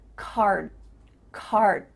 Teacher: your mouth is making the shape of that D sound, but it's not making the vibrations happening. You're not actually making a D sound, but your mouth is making that shape.